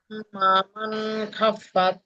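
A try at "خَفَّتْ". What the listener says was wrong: খাফফাত না, খফফাত, খফা জাবার খফ, মুখ গোল হবে, খফ।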